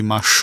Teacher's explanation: the consonant is always hard and so that e ends up sounding like the U